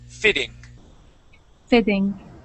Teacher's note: we're going to change those two T's to a D sound.